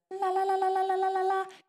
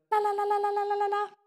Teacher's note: You flick the tongue there, just above the teeth. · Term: light L